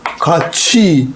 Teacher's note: 티읕하고 이가 만났어요. 그럼 치읒으로 발음하라. 그러니까 발음은 같이, 치읒으로 같이 이렇게 발음하잖아요.